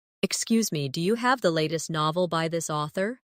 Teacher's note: In casual speech, do you often sounds like diya.